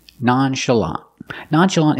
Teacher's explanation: stress the first and third syllable that's the first and the last syllable